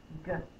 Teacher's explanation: My tongue is up in the back